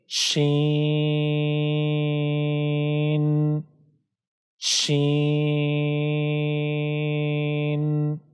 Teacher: یہ دونوں حروف باریک حروف ہے، اس کو باریک پڑھنا ہے اور دونوں حروف کو کھینچنا ہے 3 سے 5 سیکنڈ تک۔